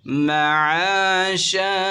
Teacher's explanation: دو زبر کی تنوین کو وقف میں الف سے بدل دیں گے